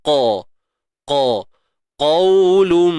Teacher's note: Huruf qaf tebal selamanya. Isti'la terangkat pangkal lidah kita untuk menebalkan suara qaf ini.